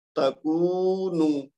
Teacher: جہاں پہ واو مد ہے اس کو لمبا کریں گے، لیکن تا جو شروع میں ہے اور آخر میں نون ہے اس کو لمبا نہیں کریں گے